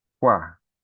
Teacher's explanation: nós temos o U mais fraquinho e o A mais forte. Imagine que esse A, por ser mais forte, ele seja maior do que o U. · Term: ditongo crescente